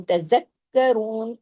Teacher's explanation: काफ जो है वो डबल है, तशदीद के साथ है, रा को हैवी करना है पेश की वजह से